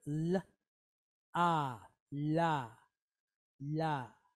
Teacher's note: All right, so we have the letter lamed, which we know makes an L sound, and it's pointed with kamatz. So this is a long duration A type vowel. So it sounds like AH.